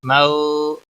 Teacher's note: واو لین ہے، تھوڑا نرمی کے ساتھ کھینچ کر ادا کریں گے۔